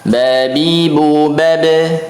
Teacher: Betul, punggung bibir atas dan bawah kali lo pengucapan ba. Ba itu tidak ditekan dan tidak keluar angin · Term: huruf ba